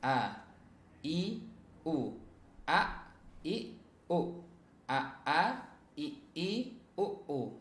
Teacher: Kalau hamzah itu dari pangkal tenggorokan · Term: huruf hamzah